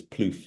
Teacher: It has a rounded vowel and a sort of continuous F at the end.